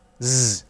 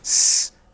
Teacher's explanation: So say s, s. And that you get a feeling of the onset of the vibration when you say z, and how the vibration disappears when you switch to s